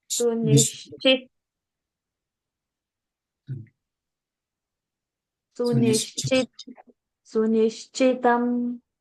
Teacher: Nish is a sh and not nis, not sa.